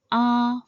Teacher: The first tone, like its appearance, starts relatively high and stays even and constant throughout like saying a for the dentist.